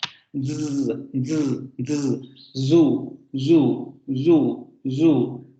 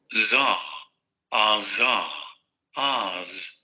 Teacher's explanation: Sonido alveolar fricativo sonoro.